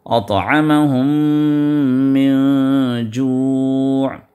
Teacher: ادغام ہے، حرف کو حرف میں ملا دینا ادغام ہے، اور میم پر شدہ آنے کی وجہ سے اس پر غنہ ہوگا